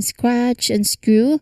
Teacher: it's a direct tight blend from S to the K to the R. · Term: SKR cluster